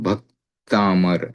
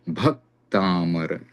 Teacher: भ पर जोर दिया जाता है क्योंकि भ की गुरु संज्ञा हो जाती है। नोट जब ह्रस्व स्वर के परे असंयुक्त अर्थात एक व्यंजन वर्ण हो तब ह्रस्व स्वर की लघु संज्ञा तथा संयुक्त वर्ण हो तब ह्रस्व स्वर की गुरु संज्ञा है। · तो भक्तामर ऐसे बोलेंगे तो भ पे थोड़ा जोर पड़ता है क्योंकि क और त आगे संयुक्त है।